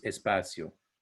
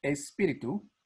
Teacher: you have an added e sound at the beginning of a word that has an s followed by a consonant in this case the p so let's look at words for